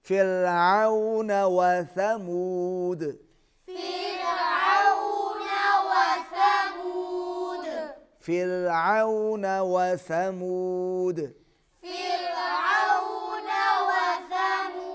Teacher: فرعون وثمود سا کو نرمی سے ادا کیجئے اور دال پر قلقلہ ہوگا.